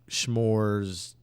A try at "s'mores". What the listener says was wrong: S'mores? S'mores? There's no H in it. There's no